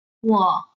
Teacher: our voice goes down then up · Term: third tone